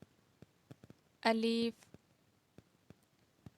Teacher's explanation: منہ کے خالی حصہ کی ہوا سے ادا ہوتا ہے